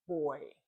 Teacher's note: Diphthongs are a union of two vowels. An example is the oi sound in boy.